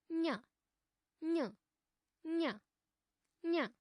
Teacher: अस्य उच्चारणस्थानं नासिकया सह तालु वर्तते।